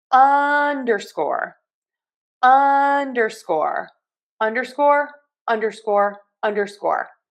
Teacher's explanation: So we are going to stress the short U here. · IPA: /ˈʌn.dɚ.skɔr/